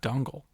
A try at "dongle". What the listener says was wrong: Dongle. That was like an owl. Owl sound. Dongle.